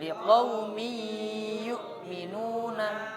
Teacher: baca dengung, tanwin seolah-olah hilang, seolah-olah langsung habis mim langsung ya. Tanwin seolah-olah tidak ada.